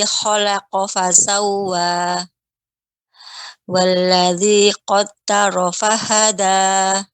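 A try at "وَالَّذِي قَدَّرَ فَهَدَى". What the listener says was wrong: Ya, dalnya Ibu. Danya ini bagian punggung ya, tidak bagian ujung. Ya, qadda ya. Walladzi qaddara fahada.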